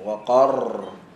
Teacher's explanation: Ra yang pertama, ra mati, sebelum dia baris atas kita tebalkan